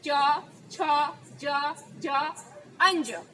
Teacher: આપણા જીભ જે તાળવાને અડીને શબ્દોનું ઉચ્ચારણ અક્ષરોનું ઉચ્ચારણ કરે છે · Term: તાલુ